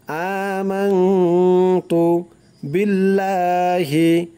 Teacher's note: ইমানে মুজমাল হচ্ছে আমানতু, আ এক আলিফ টান দিতে হবে, আমানতু বিল্লাহি, বিল্লাহ লা এক আলিফ টান দিতে হবে